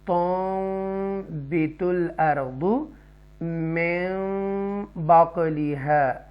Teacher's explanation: نون ساکنہ کی جو آواز ہے وہ میم میں کنورٹ ہو جائے، مکس ہو جائے. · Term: اقلاب